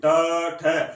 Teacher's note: ये उच्चारण स्थान बोलोगे ट ठ, यानी तालु जो है उससे थोड़ा सा आगे, यानी मसूड़ों के बिल्कुल पास में स्पर्श करेगी